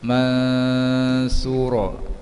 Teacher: Idgham ma'al gunah, idgham bersetengah dengung ataupun idgham naqis, memasukkan tanwin kepada mim, dibaca dengan dengung qadar panjang dua harakat. Mansura, nun mati bertemu sa, ikhfa hakiki dibaca dengan dengung qadar panjang dua harakat